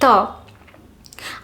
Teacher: I am touching my tongue to the teeth, and that is how the sound ta is being created